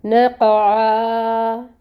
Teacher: نق، عین کو نکالیں گے وسط حلق سے، اور یہاں پر ہم اس کو آگے وقف آ رہا ہے، وقف بالابدال کریں گے، الف مد سے بدل دیں گے، 2 حرکت لمبا کیا جائے گا، ٹھیک ہے۔ نقعا، دوبارہ آیہ مبارکہ کو پڑھ کے دیکھتے ہیں۔